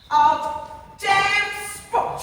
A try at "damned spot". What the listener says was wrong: It's damned spot, not damn spot.